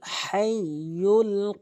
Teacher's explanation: হাইয়ুল বড় হা হলকের মাঝখান থেকে